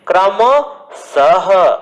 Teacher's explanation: विसर्ग मीन्स जो किसी शब्द के पीछे जो दो दांत लगे होंगे और उच्चारण करते समय ह वर्ण का वहां बोध होगा लेकिन ह वर्ण नहीं दिखाई देता, उसे हम विसर्ग युक्त शब्द कहते हैं या विसर्ग का चिन्ह कहते हैं।